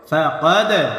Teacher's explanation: প্রতিধ্বনি আওয়াজ দিয়ে ব্যবহার করতে হবে, ধাক্কা দিয়ে পড়তে হবে। ফাকাদ, কফ দাল জবর কাদ, ফাকাদ, দাল কলকলার হরফ, প্রতিধ্বনি আওয়াজ হবে। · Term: কলকলা হরফ